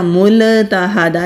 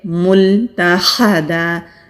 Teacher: جہاں ہم لام کو ادا کریں گے زبان کو وہاں روک کر کچھ لمحے کے لیے رکھیں گے تو پھر کلکلا نہیں ہوگا